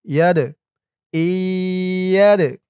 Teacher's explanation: বাগুন্না গুন্না হবে হামজা হিয়াজের এই ইয়া দিয়ে আবার দাল ধরবে এই দালটা কলকলার হরফ ধাক্কা দিয়ে পড়তে হবে